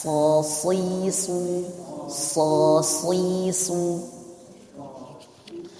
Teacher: Kalau so pangkal lidahnya terangkat